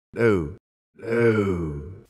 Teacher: A significant non-posh feature of William Hurt’s accent here is his GOAT vowel.